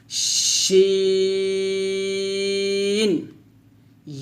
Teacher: অর্থাৎ জিম শিন ইয়া যখন আমরা উচ্চারণ করব তখন অবশ্যই জিহ্বার মধ্যখান তার বরাবর উপরের তালুর সঙ্গে লাগাবো, অবশ্যই লাগাবো এবং একটু শক্ত করে উচ্চারণ করব। জিম, শিনটা যখন উচ্চারণ করবেন একটা এভাবে একটা শীষ বের করে উচ্চারণ করবেন, শিন ইয়া ইয়া এভাবে।